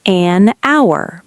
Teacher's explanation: An hour because H is silent, so it sounds like hour.